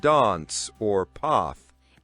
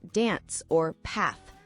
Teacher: Another common one is the vowel sound in words like dance or path. In British English, it's often a longer ah sound like dance or path.